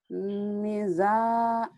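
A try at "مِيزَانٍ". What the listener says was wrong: minya panjang, mizanin.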